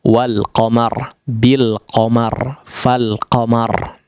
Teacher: Al-qamar mau didahului oleh huruf apapun dia akan tetap dibaca secara izhar huruf lamnya